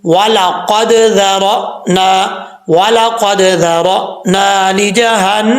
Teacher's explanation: हमज़ा साकिन हो तो हमज़ा साकिन झटके से पढ़ा जाता है